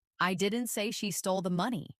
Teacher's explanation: Now, let's emphasize the word she. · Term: sentence stress